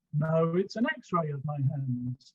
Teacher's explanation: stress on x-ray there's the correction